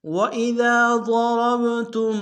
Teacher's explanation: را کو موٹا ادا کرتے ہوئے با کے سامنے آئیں گے، با حرف قلقلہ میں سے قلقلہ کریں گے